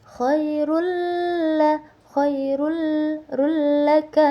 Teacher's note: tanwin domahtain bertemu dengan huruf idgham bila guna, yaitu huruf lam. Jadi cara bacanya itu dimasukkan atau ditasdidkan.